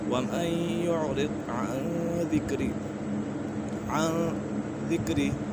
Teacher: وَمَن يُعْرِضْ عَن ذِكْرِ، یہاں پر اکفا کا قاعدہ لگ رہا ہے، نون ساکن کے بعد حروف اکفا میں سے دال آ گئی ہے تو یہاں اکفا ہوگا، یعنی غنہ کر کے پڑھیں گے